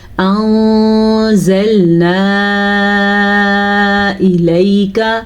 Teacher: نون ساکن کے بعد زا حروف اخفا میں سے ہے تو نون ساکن کو ہم نے چھپے غننے کے ساتھ پڑھنا ہے، چھپا کے غننے کے ساتھ پڑھنا ہے